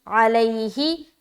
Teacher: تو سمجھ آگے، یہاں پر مد کیا 3 سے 4 الف، یہاں پر الفی میں ہم کیا کر رہے ہیں؟ یا ساکین، اس سے پہلے زبر ہے تو یا لین ہو رہا ہے، جلدی کریں گے نرمی کے ساتھ